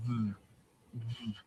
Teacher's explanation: instead of your bottom lip to your tooth, your two lips press together and go v